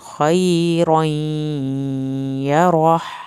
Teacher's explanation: یہاں پر تنوین یا کی شد کے ساتھ ملے گی اور دیر بھی لگے گی شد پہ، یا روح یہاں پر وقف ہوگا اور آخر میں ہا کی آواز نکلے گی، لیکن ہا آپ نے اندر سے نکالنا ہے، یہ حلق والا ہا نہیں ہے۔